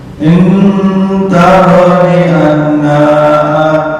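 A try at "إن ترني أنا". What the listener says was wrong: bukan anna, beda arti ntar ya. Ana bukan anna.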